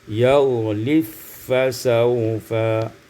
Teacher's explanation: diidghamkan ba pada fa menjadi yaghlib fasawfa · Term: idghamul ba fil fa